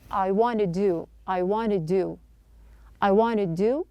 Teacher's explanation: want to do my homework earlier not pronouncing two D's here the first D at the end of wanted is a stop then pronounce to with the flap T sound so just focus we are not pronouncing the D here I'm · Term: flap T schwa sound